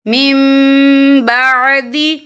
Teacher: فمن تاب من بعد، یا دیکھیں میم، یہاں نون ساکن ہے، نون ساکن کے بعد جو ہے با آ رہا ہے، تو یہاں پر اقلاب ہوگا یعنی تبدیلی ہوگی، تو ہم یہاں میم کا تلفظ کریں گے اور ہم یہاں غنہ بھی کریں گے